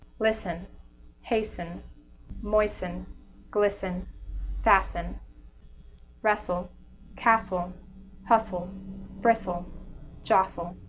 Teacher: the T is consistently dropped in words ending in st le and st en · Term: drop T